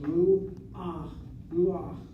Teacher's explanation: The patach is not sounded after the last letter. It's sounded before the last letter. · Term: stolen patach